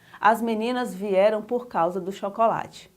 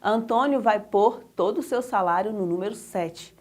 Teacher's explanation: a pronúncia do pôr com acento circunflexo é um pouquinho mais fechada